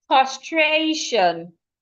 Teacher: The word is castration. We're stressing the stray.